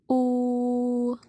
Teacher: fonem U yang berada di bagian belakang dengan bentuk bulat dan berbunyi tinggi